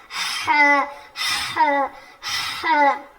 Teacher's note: آپ دیکھیے اپنے حلق پہ, مطلب اپنے گلے پر آپ اپنی انگلیوں کو رکھ کر دیکھیے, ٹچ کر کے دیکھیے کہ جب آپ ہا کہتے ہیں تو حلق کا جو بیچ کا حصہ ہے نا, مڈل آف دا تھروٹ, وہ تھوڑا حرکت کر رہا ہے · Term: حلق کے بیچ والے حصے